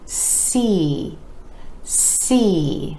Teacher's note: that E vowel sound following the S consonant